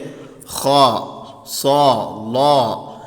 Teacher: പറഞ്ഞാൽ കനപ്പിച്ച് ഉച്ചരിക്കുക അപ്പൊ ഉദാഹരണത്തിന് അക്ഷരങ്ങൾ നോക്കുകയാണെങ്കിൽ ഹാ സ്വാ ള ഇങ്ങനെ ഒരു മുഴക്കത്തോട് കൂടെയുള്ള ശബ്ദം വരും തഫ്ഹീം ആയിട്ട് ഉച്ചരിക്കും വായ നിറയെ ശബ്ദം ഉണ്ടാക്കിയിട്ട് എന്ത് ചെയ്യുക ഒന്ന് കനപ്പിച്ച് ഉച്ചരിക്കുക എന്നുള്ളതാണ് തഫ്ഹീം കൊണ്ട് ഉദ്ദേശിക്കുന്നത് തടിപ്പിച്ച് ഉച്ചരിക്കുക